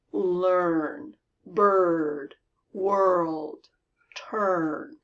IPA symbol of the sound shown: ər